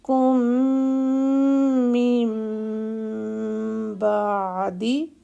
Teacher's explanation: من کا جو نون ہے اس نون کو بھی ہم نے میم بنانا ہے اور 2 حرکت کا ہولڈ دینا ہے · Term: اقلاب